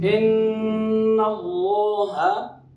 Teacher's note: ان پر مشدد غنہ ہے، اللہ کا لام موٹا ہے، اور اللہ کے لام میں جو کھڑی زبر ہے اس کی مقدار الف مدہ کے برابر ہوتی ہے.